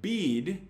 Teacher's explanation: the vowel in the word bead is held for usually around 350 milliseconds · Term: long vowel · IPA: /biːd/